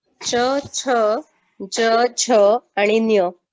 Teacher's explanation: आपल्या जिभेचा जो मधला भाग आहे, ठीक आहे, जिभेचा मधला भाग हा आपल्या टाळूला स्पर्श असतो, म्हणून त्याला तालव्य म्हणतात